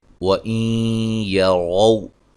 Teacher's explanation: نون ساکن کا ادغام مع الغنہ ہے ، را کو موٹا ادا کریں گے، وولین ہے، نون تنوین